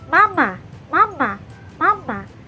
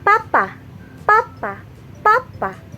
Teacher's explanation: Papa, papa, papa. Jelaskan, kalau bunyi nasal tadi sedikit berdengung di bagian hidung, tapi kalau bunyi oral tidak ada berdengung atau bergetar di bagian hidung.